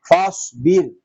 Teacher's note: فاصبر، صاد پر، را باریک۔ یہاں دیکھیں یہ صاد اس لیے پر ہے کہ یہ صاد حروف مستعلیہ میں سے ہے، را اس لیے باریک ہے کہ را کے نیچے زیر آ گیا ہے۔